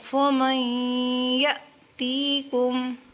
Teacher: جھٹکا دیں گے کیونکہ حمزہ ساکن ہے تو اسی لیے یہاں پر اس کو جلدی یعنی جھٹکے سے پڑھیں گے۔